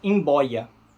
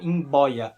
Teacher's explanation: E nesse caso, o B é bilabial. Emboia. A palavra é M-B-O-I-A.